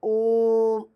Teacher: प्लुत स्वर जिसमें हम ज्यादा समय तक जैसे बोलते हैं